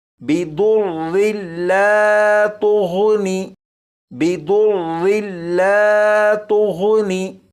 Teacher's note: यहाँ पर देखें, यह है दौद और यहाँ पर है गैन। दौद और गैन इन दोनों को पुर यानी मोटा पढ़ेंगे